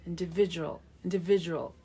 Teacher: A 5-syllable word with a middle syllable stress.